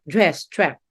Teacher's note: the merging of dress and trap, dress, trap, not dress or trap, not like that.